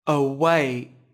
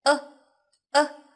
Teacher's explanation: Từ này có hai âm tiết, trọng âm rơi vào âm tiết thứ hai các bạn nhé. Âm tiết đầu tiên là âm ơ ngắn